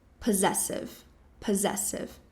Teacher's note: E também a sílaba tônica, a mais forte, vai ser a segunda.